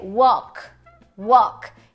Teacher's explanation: o som de w, o O de avó, só que ele é um pouquinho mais longo